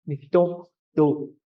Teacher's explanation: And it's a glide to nitong to. Your voice kind of goes up.